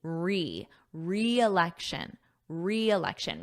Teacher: notice that pronunciation we have a strong e sound a long e